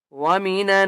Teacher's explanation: نون کے اوپر تشدید ہے غنہ کریں گے